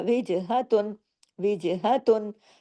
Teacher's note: ता दो पेन पूरा पढ़ा जाएगा कोई गुना नहीं होगा यहां पे क्योंकि आगे हरफ हल्की आ गया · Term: इजहार हल्की